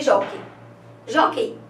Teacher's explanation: Nós temos que e jó, então são só duas sílabas. A sílaba tônica é a penúltima, então é uma paroxítona, né? Terminada em ditongo aberto, que é o ei, né?